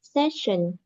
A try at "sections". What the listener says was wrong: Sections. You got to say the S again. Sections.